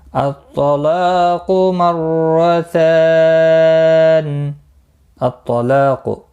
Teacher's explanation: طا مستعلیہ ہے پر پڑھا جائے گا